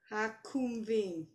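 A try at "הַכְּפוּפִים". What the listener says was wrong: It's a fe. It's a f. Hakfufim. Two of them. Look at the look at the first word again. No, it's not an R at the end.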